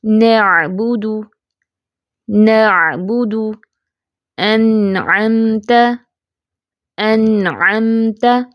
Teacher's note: تو یہ نرمی اور سختی کے درمیان میں اس کی آواز ہوتی ہے، نہ زیادہ سخت ہوتی ہے نہ زیادہ نرم ہوتی ہے، باریک اور کھلی ہوئی آواز ہوتی ہے نون کی